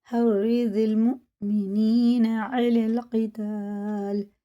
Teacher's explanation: یہ یا اور الف بالکل نہیں پڑھنے میں آئے گا کیونکہ خالی ہیں، لام لگائیں گے سیدھا لام میں